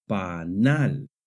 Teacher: It lets us know that we must raise our voice slightly when we get to that syllable. The word panal has the stress on the last syllable. Panal. This follows the natural stress rules in Spanish which say that if a word ends in a consonant other than n or s, the stress naturally falls on the last syllable.